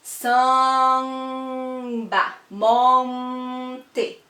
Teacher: essas letras M e N, elas nasalizam a vogal, elas tornam o som da vogal nasal